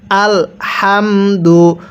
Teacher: এই হাগুলো উচ্চারণ করার সময় মুখ দিয়ে হালকা বাতাস বের করে পড়তে হবে